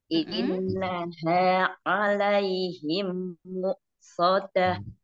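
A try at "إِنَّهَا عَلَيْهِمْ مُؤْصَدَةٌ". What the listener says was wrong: Nah sekarang yang tasjid mim dan nun harus pakai lama ya Mi. Dikasih zaman, dikasih durasi. Innaha alaihim mu'sadah. Alaihim. Coba fokus di mulut nih. Alaihim mu'sadah. Jangan buru-buru mim. Jangan buru-buru mimnya, mim tasdidnya. Coba di awal mim. Soalnya tebal ya mim.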